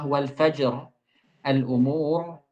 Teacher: Ini wal fajr, al umur, itu tufakham waqfan, dibaca tebal ketika waqaf saja, dengan syarat waqafnya itu waqaf dengan sukun.